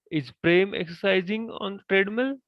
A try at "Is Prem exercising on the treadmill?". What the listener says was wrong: On the treadmill. So change your change your tone a little bit higher. Is Prem exercising on the treadmill? That kind of way.